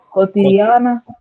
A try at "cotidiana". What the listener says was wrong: Yeah.